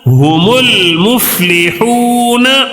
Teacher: لام کو پڑھیں گے، الف کو نہیں پڑھیں گے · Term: قمری کے حروف